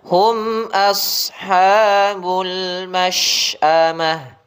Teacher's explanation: Shad tebalkan. Hum a tipis, shad tebal.